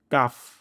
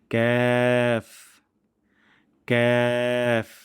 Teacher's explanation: তারপর ক্যাফ, জিহ্বার গোড়া থেকে একটু আগে বাড়িয়ে এবং তার বরাবর উপরে তালুর সঙ্গে লাগিয়ে আমরা উচ্চারণটি করব পাতলা সাউন্ডে ক্যাফ, যেন কাফ না হয়ে যায়।